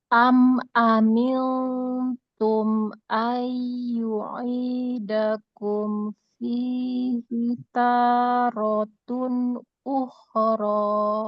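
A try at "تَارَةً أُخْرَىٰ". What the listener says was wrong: Tapi sayangnya bukan tarotun. Tarotan.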